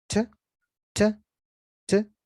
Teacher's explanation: Pero esta palabra, al hablarla rápido, la puedes reducir a una especie de t, t, t, que es la T con la schwa. No te preocupes que la schwa es un sonido que suena como e.